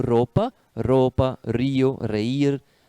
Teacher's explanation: R, la R, sempre vibrante, como roupa, roupa, rio, reír. É uma letra que vibra, né? Não se pronuncia como no português, roupa, porque esse som seria o som do J com O, ro, né?